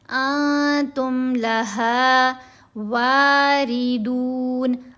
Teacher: انتم لہا واردون، را کے نیچے زیر آئے تو را کو باریک پڑھتے ہیں، را کے اوپر زبر ہو یا پیش تو را کو موٹا پڑھنا ہے۔